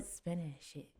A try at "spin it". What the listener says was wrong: It kind of sounds like you're saying spinach it.